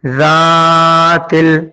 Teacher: اس کے بعد ہے زال علی زبر ذات، لام ز تل، ذاتل۔ زال کو ایک الف کے برابر کھینچا گیا ہے